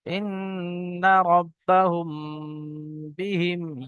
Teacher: মিম সাকিনের পরে বা এসছে তো এখানে গুণনা করে পড়তে হবে, একে একফায়ে সাফাবি বলা হয়। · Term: ইকফায়ে সাফাবি গুন্না